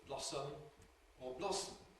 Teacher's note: we certainly have a very free choice between ‘blossom’ /ˈblɒsəm/ or /ˈblɒsm̩/, whether the /ə/ is there overtly or not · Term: syllabic /m̩/